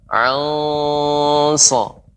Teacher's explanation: So huruf isti'la, huruf tebal. Maka juga ikhfa'nya tebal juga. Anso. Saya baca kembali.